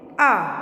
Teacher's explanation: मात्रा का उच्चारण कर रहे हैं तो हमारे मुंह और नाक दोनों से ध्वनि आ रही है, यानी दोनों से आवाज़ आ रही है, इसलिए इसे अनुनासिक भी कहा जाता है।